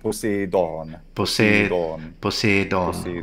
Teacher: It's long. It's a long closed E sound.